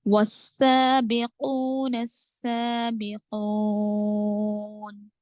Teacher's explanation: वाव को direct सीन से मिला रहे